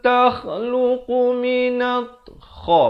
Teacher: Makhrajnya sama seperti ghain di ujung kerongkong ini.